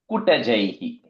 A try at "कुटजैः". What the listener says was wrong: You made it long.